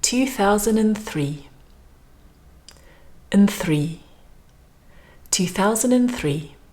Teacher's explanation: we don't have to say the word and very strongly